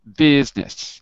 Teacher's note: so you might want to cut out the i